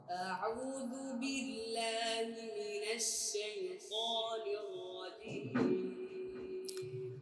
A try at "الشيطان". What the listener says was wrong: সায়ও যাও না, সায়ও না, সাই সিনিয়া জবর জুড়ে সাই, সায়ও না, সায়ু তো না, সাই তো বলেন সাই। আবার জুড়ে সাই তো, সাই তো, সাই তো, সাই তো, সাই তো, সাই তো, সাই তো, সাই তো, সাই তো, সাই তো, তো আরো মোটা সাই তো, রটা পুর হবে। রপুরটাকে সুন্দর করতে হবে।